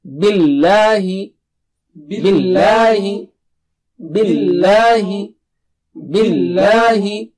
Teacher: Don't make the lam thick here. Don't say billahi. No. Just the normal lam.